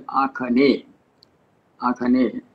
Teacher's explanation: the ga is pronounced there like kha, the final syllable is dropped, so agneya becomes there akhane, akhane, ga being pronounced as kha, so we have akhane.